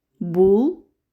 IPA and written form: bʊl (bull)